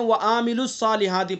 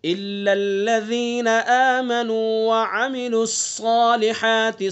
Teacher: عین کے اوپر خالی حرکت ہے، اور حرکت کو ذرا بھی نہیں کھینچا جاتا ہے